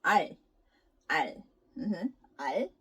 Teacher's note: after saying 알, your tongue kind of touches the middle part of the top of your mouth. Not behind your front teeth, but like the middle part of your ceiling of your mouth.